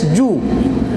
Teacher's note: तो ये पेश की अदायगी में होंठ गोल होगा, बाकी गोल नहीं होगा।